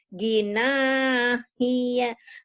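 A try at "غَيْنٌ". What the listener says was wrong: Bukan hi tapi ai. Ai. Ai. Gina. Ai. Gina, iya jangan gina hia ya diketawain nanti bisa baca Gina, iya ya yang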